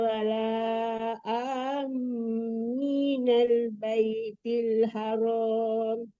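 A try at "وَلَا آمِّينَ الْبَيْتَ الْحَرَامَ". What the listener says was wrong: Baital ya, dari wala amin. Kan dipanjangkan dulu baru ditasdikkan ke mimnya.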